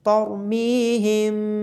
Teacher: میم ساکن کے بعد با ہونے کی وجہ سے اخفاء شفوی ہوگا اور میم کی آواز کو چھپا کر پڑھا جائے گا · را کو موٹا پڑھا جائے گا اور میم کے بعد یا مدہ ہونے کی وجہ سے میم کو لمبا کیا جائے گا۔